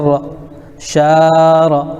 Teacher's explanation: زبر کو جلدی پڑھیں، تھوڑا بھی نہ کھینچیں، زبر کی آواز اوپر کو اٹھتی ہے، جیسے را زبر را، شار۔